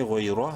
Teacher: غوی، را زبر را، را کو منہ بھر کے پڑھیں گے زبر کی وجہ سے